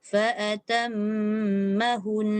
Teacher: Okey, dia jangan panjangkan seolah-olah ada waw. Dia daripada ha, bonda terus masuk nun.